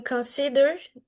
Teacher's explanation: for example in consider the second syllable is stressed